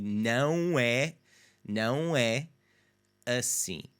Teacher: The throaty nasal sound there in the não